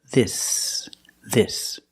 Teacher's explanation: And the S is a true S. There's no voice. There's no vibration.